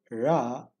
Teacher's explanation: when i say ra i touch the middle upper part of the mouth